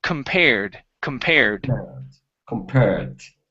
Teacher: word compared so here instead of com this is Kum because the stress is on the pair